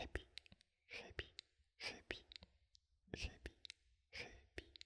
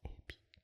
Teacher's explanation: Il y a donc un mot qui se prononce Hebi avec un H aspiré et l'autre mot qui se prononce Ebi sans H.